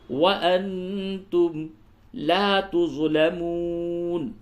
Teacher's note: نون ساکن کے بعد تا ہے، اخفا کیجئے